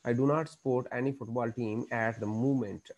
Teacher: Fall rise intonation describes how the voice falls and then rises. We use fall rise intonation at the end of the statement.